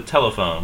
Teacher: we stress the first syllable in English